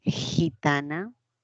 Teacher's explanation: Entonces qué tenemos gitana fricativa oclusiva y nasal